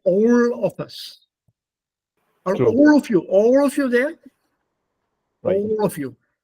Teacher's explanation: The L goes back into a retroflex, where the tongue goes back, up meeting the palate.